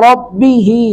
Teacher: را کو پر کریں گے